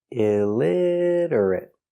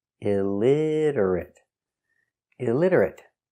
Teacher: four syllables stress on the second syllable illiterate stress on lid illiterate illiterate he cannot read he is